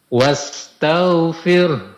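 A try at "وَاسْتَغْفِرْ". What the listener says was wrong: Nah, tinggal di ha-nya, Pak ya. Ha-nya lebih jelaskan. Fir, wastaghfir.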